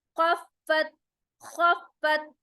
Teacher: खा में scratching sound मोटा होगा। फत, फा के ऊपर शद आ रहा है, तो उसको हम सख्ती के साथ डबल टाइम प्रोनाउंस करेंगे।